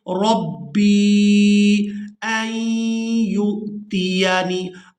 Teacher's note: फ़असा रब्बी, रब्बी, रा को बा मुशद्दद के साथ मिलाएंगे और सख्ती के साथ अदा करेंगे। इसके बाद बा को या साकिन के साथ मिलाएंगे तो खींचकर अदा करेंगे।